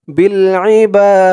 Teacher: এখানে অক্ফ করার কারণে বা জবরের পরে খালি আলিফ, এক আলিফ টানটা তিন আলিফ টান হয়ে গেছে। বা বলে তিন আলিফ টান দিয়ে এই দালকে ধরেছে, দালের নিচে যেটা সাকিন হয়ে গেছে।